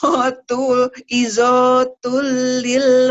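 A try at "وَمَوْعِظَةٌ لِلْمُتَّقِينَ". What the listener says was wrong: ada yang panjang. Wa mau izotul nggak ada yang panjang. Wa mau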